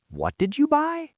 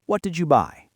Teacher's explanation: Rising intonation on a what question implies surprise or disbelief. If you tell me you bought a new car and I say, "What did you buy?" With a rising pitch, it means I am shocked.